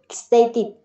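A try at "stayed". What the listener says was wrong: Tịt cái gì mà tịt, kết thúc bằng tờ đâu mà tịt. đọc là đờ, stay. TED mới đọc là tịt.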